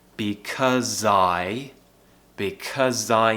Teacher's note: we're actually going to use the z at the end of because to join to the i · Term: linking